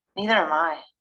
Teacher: we stress the second pronoun